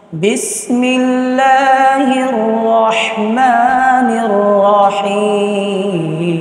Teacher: হের নির বলতে গিয়ে ঠোঁট কোনোভাবে গোল হবে না, এইদিকে খেয়াল রাখতে হবে।